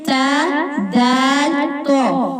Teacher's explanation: تا بھی باریک پڑھا جائے گا، دال بھی باریک پڑھا جائے گا، اور صرف جو تو ہے اس کو ہم موٹا کر کے پڑھیں گے